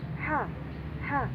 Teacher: ha itu memiliki di tengah-tengah tenggorokan ya, atau wastul halki. Jadi suaranya bening.